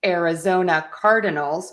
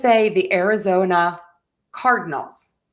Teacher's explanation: I actually kind of drop almost that middle syllable. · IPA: /ˌærɪˈzoʊnə ˈkɑːrdɪnəlz/